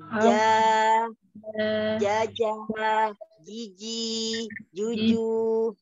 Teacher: Ajanya kita ja, jaja ya, tapi kalau janya Arab, ja. Ja, tengah, tengah lidah. Nempel langit-langit. Ja, jangan ja, jangan di depan.